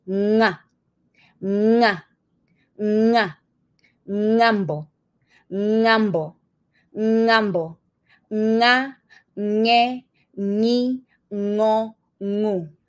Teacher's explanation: And therefore the sound is nga, nga, nga, ngambo, ngambo, ngambo, nga, nge, ni, ngo, ngu. Your tongue pulls back a little bit and lifts in the back. And the back part of your tongue is touching the soft palate of your mouth, the top soft palate of your mouth.